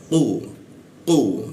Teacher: Ya masuk ke ku di mana siku tenggorokan, lidahnya dinaikkan. Nah, sehingga rongga udara terkunci ya. Tidak ada hembusan udara ketika dibacanya. Ku seperti itu, langsung seperti itu ya, seperti ada hentakan tapi tidak ada awalan dia.